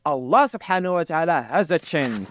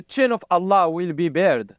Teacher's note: He's saying chin for shin. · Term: ch sound